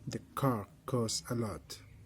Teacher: car is unvoiced and you feel the aspiration of air when you pronounce car